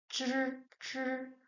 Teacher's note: Zh is retroflex sound. It's similar to zi, but it's weather and retroflex.